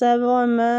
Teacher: وما میں جو مد ہو رہی ہے نا، مد جائز منفصل ہو رہی ہے، اس کو کھینچنے کی مقدار 4 حرکات ہیں۔